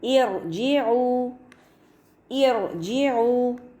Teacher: کسرہ دینے کے باوجود ہم راء کو مفخم یعنی ہیوی پڑھیں گے